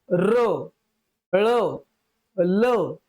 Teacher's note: यांचा उच्चार करताना नादयुक्त श्वास प्रवाही होतो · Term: द्रव्य व्यंजन